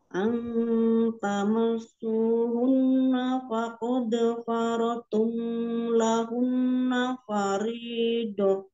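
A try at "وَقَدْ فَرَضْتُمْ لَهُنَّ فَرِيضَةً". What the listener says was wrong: Wa ya tadi fa-nya kayak kurang jelas Om, kayak fa tadi terbacanya.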